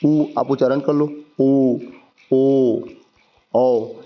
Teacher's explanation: जिन स्वरों के उच्चारण में, ठीक है, ओष्ठ गोलाकार हो जाता है, संवृत्त कहलाता है।